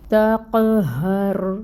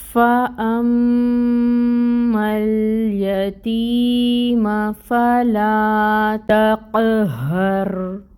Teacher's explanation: قاف پر حروف مستعلیہ، اور یہاں پہ قلقلہ بھی ہوگا اس پہ کیونکہ یہ ساکن ہے